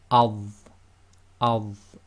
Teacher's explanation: So that's tafkhim. It's heavy, lifting the back of the tongue up, a bit more full mouth.